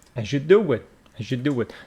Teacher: He says as, it's not as you. These two sounds, whenever we got z and y sound, they assimilate together, giving you the sound of j. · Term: assimilated together